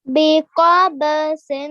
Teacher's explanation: Okay, so when you round your mouth with the letter, then it's a thick letter, and you have to read this qaf. You pronounce it from your throat, from the middle of your throat as well · You rounded your mouth with the qaf. It's a thick letter. Okay, so when you round your mouth with the letter, then it's a thick letter, and you have to read this qaf.